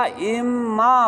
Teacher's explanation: ان کا نون اور میم قریب المخرج ہے، لہٰذا نون کو کیا کر دیا؟ میم میں تبدیل کر دیا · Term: ادغام